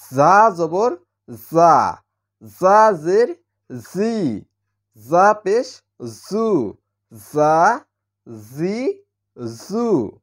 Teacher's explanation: জিহ্বার আগা আর নিচের দাঁতের পেট থেকে শীষ দিয়ে উচ্চারণ করতে হয়